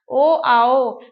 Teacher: ओ आओ का उच्चारण स्थान कंठ और ओष से होता है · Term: कंठ उष, कंठ योष्ठ्य